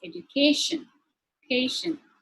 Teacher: Likewise, if the suffix is tion, sion, or ic, the stress shifts to the third syllable, which is education.